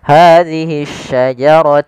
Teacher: Hadisajar sama di sini ada alif lam tapi di sini alif lamnya alif lam syamsiyah. Yaitu alif lam yang kita tulis dan tapi kita tidak anggap lamnya sehingga dia langsung diidgamkan ke huruf syin menjadi syin yang bertaharakat tasydid.